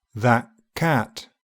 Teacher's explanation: if the next sound is VELAR, the /t/ becomes an unreleased /k/ THAT CAT And everyone's favourite sound, the glottal stop is likely to reinforce the unreleased sound by occurring just before the closure.